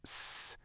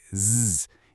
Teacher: Voiceless sounds like s are just air hissing. But for voiced sounds like zzz, you flick on your vocal cords and they start vibrating, adding this buzzing quality to the sound. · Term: voicing